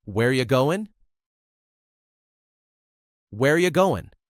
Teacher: Here, you changes to ya, and the word R disappears. Also, going is replaced with the shorter, faster goin'.